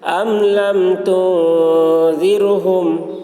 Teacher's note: میم ساکن کے بعد با اور میم کے علاوہ حرف آ رہا ہے، اس لیے میم کو ظاہر کر کے پڑھیں گے، اس کو اظہار شفوی کہتے ہیں۔